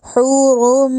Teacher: اب روم کا رو پر کر کے پڑھا جائے گا، موٹا کر کے